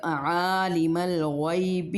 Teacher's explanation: ہم کوشش کرنی چاہیے کہ عین کا جو مخرج ہے ہمارے جو مڈ تھروٹ ہے وہاں سے نکلے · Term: عین کا مخرج